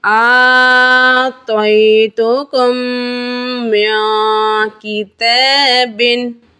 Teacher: یعنی ہجو کے اندر ہم پہلا جو متحرک حرف ہے کاف، دوسری میم ساکن، تیسری میم پہ تشدید لگی ہوئی ہے، یہاں ہم کاف میم میم دونوں میموں کے نام لیں گے اور پھر کم ایک الف گنہ کر کے پڑھیں گے۔ قاعدہ یہاں میم ساکن کے بعد دوسری میم آ جانے کی وجہ سے ادغام شفوی کا قاعدہ ہے، ایک الف گنہ